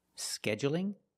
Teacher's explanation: you can say scheduling with the stress on the first syllable scheduling or you can say scheduling and make it longer on